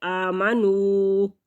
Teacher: واو ساکن سے پہلے لفظ کے اوپر پیش ہے تو واو مدہ ہے، ایک حرکت کے برابر اس کو لمبا کریں گے۔ آمنو، نون کو ناک میں نہیں لے کے جانا